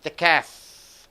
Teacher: The F sound is coming as the air is pushing out of your lips.